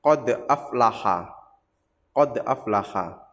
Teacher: Kalau di sini contohnya qad aflaha, qad aflaha, qad ada pantulnya d, qad. Nah, pantulannya kecil karena qalqalah sughra.